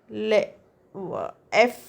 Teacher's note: And then F as voiceless, labiodental fricative.